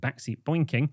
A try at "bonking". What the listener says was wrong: Bonking. Stop saying boinking. It's bonking. They've either spelt it wrong or you don't pronounce the I.